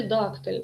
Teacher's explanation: у слові дактиль наголос падає на перший склад